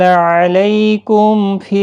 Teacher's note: میم ساکن کے بعد فا آیا ہے، اظہار شفوی ہوگا